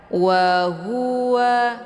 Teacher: Waw keluarnya dua bibir, ha keluarnya dari tenggorokan, kemudian waw juga dua bibir.